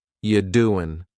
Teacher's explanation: The word you is reduced to ya.